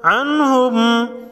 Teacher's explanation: نون ساکن کے بعد حروف خلقی میں سے ہا ہے، اظہار خلقی ہوگا یعنی غنہ نہیں ہوگا